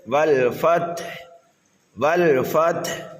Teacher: تھوڑا یہاں پر وقف مشکل ہے، لیکن یہاں پر ہمیں تھوڑا سا خیال رکھنا ہے، یہاں پر ہمیں قلقلہ نہیں کرنا ہے، یعنی اپنے سکون کو نہیں ہلانا ہے، سکون کو باقی رکھنا ہے۔